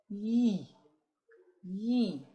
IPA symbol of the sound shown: j